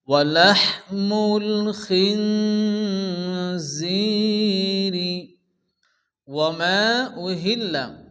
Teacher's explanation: খিনজিরি, জায়াজের জি ইয়ামাদ্দা এক আলিফ টান হবে।